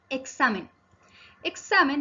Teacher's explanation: Examen tiene la sílaba tónica en sa. Como es la penúltima sílaba, se denomina palabra grave y como termina en n, no lleva tilde.